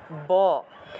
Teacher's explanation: দুইটা ঠোঁট লাগাতে হয় একটা একটার সাথে ঠোঁট লাগাতে হয় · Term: বর্গীয় ব